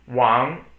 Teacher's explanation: Wang, 四声, okay, so it's fourth tone. Wang, it's the falling tone.